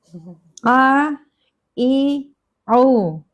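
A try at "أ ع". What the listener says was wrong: Ya, ain yang pertama masih lengket banget. Kayaknya hamzahnya jadi ain juga tuh kali dia tuh.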